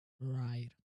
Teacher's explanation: Here the R sound is at the beginning of the word, so the lips round into a tighter circle. The tongue movement is the same.